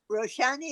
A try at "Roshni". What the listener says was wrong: Roshni. It's spelled out with an A, just like the book Meher Roshni. But pronunciation wise, it's just Roshni.